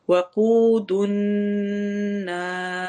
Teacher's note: واو ساکن سے پہلے پیش آ جائے تو ہم اس کو لمبا کرتے ہیں، کتنا؟ 2 کاؤنٹ۔ وقود النار، نا نون کے اوپر ہم نے غنہ کرنا ہے، اور نا میں الف مدہ ہو رہی ہے، اور اینڈ پر ملاتے ہوئے مد ہو جاتی ہے، جس کو ہم کہتے ہیں مد عارض، تو اس وجہ سے ہم اس کو زیادہ لمبا کرتے ہیں۔ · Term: واو مدہ